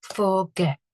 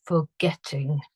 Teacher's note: get is the bit that is stressed in that word, so I need to double the T at the end.